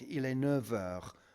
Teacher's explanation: And the similar sort of thing happens when you say 9 o'clock, il est 9 heures, and that F sounds like a V